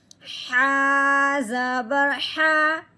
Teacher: ہا کو حلق سے نکالنا ہے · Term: باریک ہا